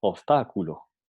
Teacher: la B se debilita tanto hasta omitir por completo el sonido B